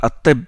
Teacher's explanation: On ne prononce pas le Lam. Il entre dans le Ta. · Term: lettres solaires